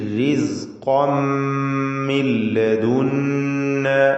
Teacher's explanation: തൻവീനിനെ പൂർണ്ണമായും മീമിലേക്ക് ലയിപ്പിച്ച് മണിച്ചുകൊണ്ട് ഇദ്ഗാം ബിഗുന്ന കാമിൽ നൽകി റിസ്ഖം മിൻ ലദുന്ന എന്ന് ഉച്ചരിക്കുക